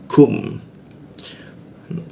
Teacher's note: kum di siku tenggorokan, lidahnya kita turunkan sehingga ada hembusan udara ketika membaca kum